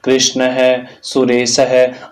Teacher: अंत में विसर्ग लगा हुआ है, इस कारण से इनका उच्चारण है के समान हम कर रहे हैं।